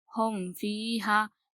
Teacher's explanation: ہمیں صرف یہ یاد رکھنا ہے میم ساکن کے اظہار میں کہ میم کے بعد با اور میم کے علاوہ کوئی بھی حرف آئے تو ہمیں یہاں پر گنہ نہیں کرنا ہے، اسے جلدی پڑھنا ہے اور میم کو ظاہر کر کے پڑھنا ہے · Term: اظہار شفوی